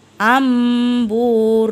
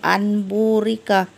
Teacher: ba nah ini contohnya amburika Jadi enggak boleh and Bu Rika Nun matinya seolah berubah jadi huruf mim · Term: iqlab